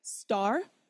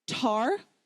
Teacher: Star, absolutely zero flutter. Tar, we do have a flutter, right? So when you're trying this is ta, ta, ta.